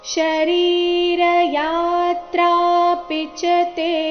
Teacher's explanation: ಯಾತ್ರ ಎರಡು ಸಹ ದೀರ್ಘ ಬರಬೇಕು ಪಿಚತೆ ಚರಣದ ಕೊನೆಯಲ್ಲಿ ಇದ್ದೆ ಸಹ ದೀರ್ಘ ಬರಬೇಕು ಶರೀರ ಯಾತ್ರಾ ಪಿಚತೆ ನ · ಚರಣದ ಕೊನೆಯಲ್ಲಿ ಇದ್ದ ತೇ ಸಹ ದೀರ್ಘ ಬರಬೇಕು